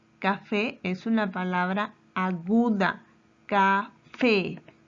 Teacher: Café lleva su mayor fuerza de voz en la última sílaba.